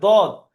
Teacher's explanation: জিভের কিনারা সাইডের মাড়ির দাঁতের গোড়ার সাথে লেগে উচ্চারণ হয়